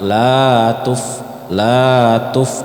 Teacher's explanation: maka dibaca panjang satu ayunan atau dua harakat